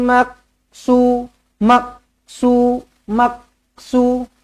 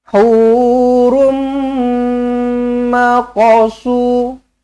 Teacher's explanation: huruf qf mati jangan ditahan-tahan biar lepaskan dia lantunkan je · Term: Qalqalah